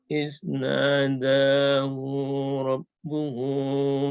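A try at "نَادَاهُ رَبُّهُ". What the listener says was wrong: Hu-nya pendek di situ. Hu-nya pendek. Iznadahu rabbuhu.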